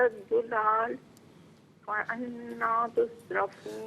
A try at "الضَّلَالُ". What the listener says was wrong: دولال پہ ایسا محسوس ہو رہا ہے، فیل ہو رہا ہے کہ ڈاٹ کو آپ پیش کے ساتھ پڑھ رہی ہیں، تو اس کی ذرا پریکٹس کر لیجیے گا، دولال، ٹھیک ہے؟